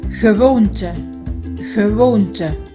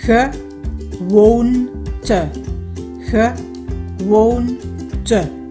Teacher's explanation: Khi một nguyên âm e mở đứng ở cuối từ, có nghĩa là sau nó không có một phụ âm nào đứng, thì nó luôn luôn là stomme e và mình luôn đọc là ơ. · Như các bạn thấy, đây là từ có ba âm tiết và được nhấn ở âm tiết giữa won. Hai âm tiết còn lại không được nhấn, cho nên cả hai chữ e đó đều là stomme e và chúng ta phát âm là ơ.